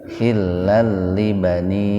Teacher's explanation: Dibacanya lebih dari tabi'i, ya, lebih dari biasa, 4 sampai 6 ketukan. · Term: majaiz munfasil